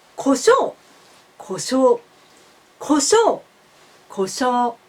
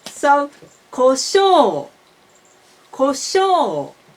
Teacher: You should make pitch from high to low in one long vowel. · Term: Japanese pitch accent